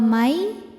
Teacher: cara bacanya bunyi nun masuk ke ya, wa may disertai bunyi dengung. Wa may ditahan dengungannya. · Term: idgham bi gunnah